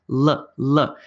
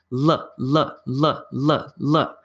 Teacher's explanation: This one's like my tongue is just behind my top teeth, going l, l. My tongue actually hits my top teeth. L, l, l, l, l.